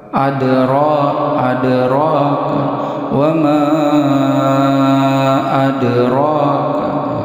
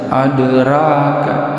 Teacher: huruf ra ini berbaris atas, dibaca tafkhim atau tebal. Adra wa ma adraka, jangan dibaca adraka.